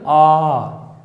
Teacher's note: वे स्वर जिनके उच्चारण करने पर मुख पूरा खुलता है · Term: विवरित स्वर